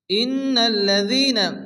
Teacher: নুনের উপরে তাসদীদ নুন গুণা ওয়াজিব